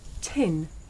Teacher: the puff of air at the beginning of tin makes the paper move